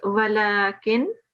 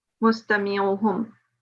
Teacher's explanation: you are pronouncing the izhar and without ghunna